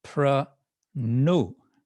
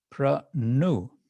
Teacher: I was sent to pranu, retroflex na, pranu